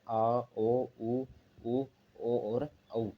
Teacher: और इसका तीसरा जो भाग आता है वो है पश्च स्वर। पश्च स्वर जीवा मुंह में पीछे वाले भाग में रहती है, या जो जीवा का संपूर्ण क्षेत्र है, संपूर्ण क्रियाशीलता है, वो मुंह के पिछले वाले भाग में रहती है।